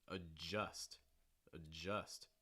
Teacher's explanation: notice you get two schwa sounds here